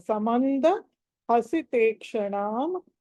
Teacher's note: మ తర్వాత అనుస్వరము తర్వాత ద కాబట్టి నా రావాలి